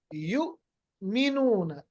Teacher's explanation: जब भी आप हमजा पर जज्म देखेंगे ना, इस पे झटका होता है। झटका का मतलब आवाज को ठहरना है। जैसे यू मीनून, यू अलग है और मीनूना ए अलग है, इसको झटका कहते हैं।